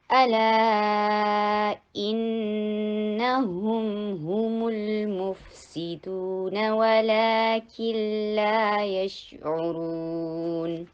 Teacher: الا شارٹ اور لا four حرکہ long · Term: مد طبیعی